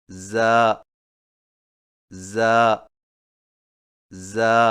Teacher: را را را. زا کی ادائیگی میں زبان کی نوک کو سامنے والے نیچے کے دو دانتوں کے کناروں سے مضبوطی سے لگا کر باریک اور سیٹی جیسی آواز میں پڑھیں